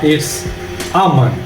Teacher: there's the schwa a sound at the beginning of the word among